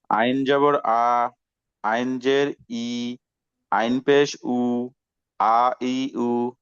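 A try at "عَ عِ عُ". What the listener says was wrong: হ্যাঁ, আ ই উ, এটাকে একটু শক্তিতে বলবো, ঠিক আছে? আর একটু শক্ত করে বলবো।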